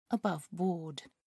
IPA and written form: əˈbʌvbɔːd (aboveboard)